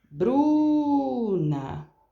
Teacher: Então, eu prolonguei o Bruna. Nesse caso, eu prolonguei a primeira sílaba. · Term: sílaba tônica